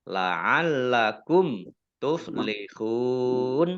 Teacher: mim sukun bertemu dengan huruf ta, bacaan izhar syafawi, dibaca jelas